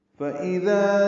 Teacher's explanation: فَإِذَا جَاءَتِ الصَّاخَّةُ، فا کو جلدی پڑھنا ہے، اذا میں حمزہ اقصی حلق سے بالجہر ادا کرنا ہے ، ذال نرمی سے پڑھنا ہے، ذا الف مدہ ہے، 2